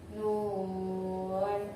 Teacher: Contoh, nun. Di situ ada mad bertemu dengan sukun dalam satu huruf, maka cara bacanya panjangnya 3 alif atau 6 harakat. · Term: mad lazim harfi mukhaffaf